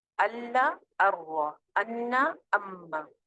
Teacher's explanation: یہ جو اب آپ کے پاس 4 لیٹرز نظر آ رہے ہیں، یہ دونوں کالم جو ہیں، لام، را، نون، میم، اس کو کہتے ہیں کامل ادغام، مکمل ادغام، یعنی کہ نون کی آواز اس میں بالکل ختم ہو جاتی ہے، بالکل بھی نون نہیں پڑھا جا رہا